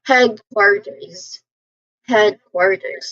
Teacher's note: So the primary stress, it falls on the first syllable, head. So you say this part with slightly more emphasis, of course. · the letter S spelling here is, it sounds like a buzzing sound. It sounds like a letter Z sound.